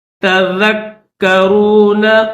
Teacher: کاف کے اوپر تشدید ہے تو اس کو دبا کر اور سختی کے ساتھ پڑھیں گے